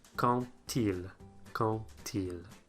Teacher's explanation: I mentioned before though that sometimes the letter D doesn't make a D sound, and that is when it's liaised. So if one word ends with a D, and the following word starts with a vowel, it will liaise, but it will be pronounced like a T, as in quand-il, quand-il.